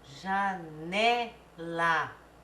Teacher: a tônica também não é a última é penúltima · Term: paroxítonas